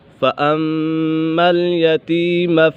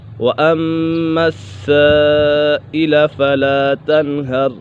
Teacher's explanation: میم مشدد ہے، میم مشدد میں ہمیشہ غنہ ہوتا ہے